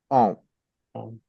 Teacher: you will not hear sound of M, but it is just like sound of N only, nasal sound you will hear